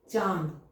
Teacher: क्यों लगा क्योंकि इसका उच्चारण करके हम देख रहे हैं कि पहले मुह और फिर पीछे पीछे नाक से भी इसकी ध्वनि इसकी आवाज आती है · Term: अनुनासिक